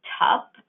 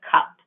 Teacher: in fronting a child may say tough instead of cup